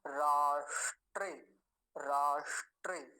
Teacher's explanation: मूर्धन्य सकार वो भी हलंत आधा है तो उसका अच्छे से ध्यान से उच्चारण करेंगे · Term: मूर्धन्य शकार